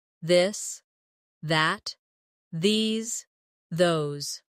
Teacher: for the harder th in this. Add a bit of voice to the sound. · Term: voiced the sound